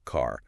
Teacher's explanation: Americans usually pronounce the R at the end of words like car. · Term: the R sound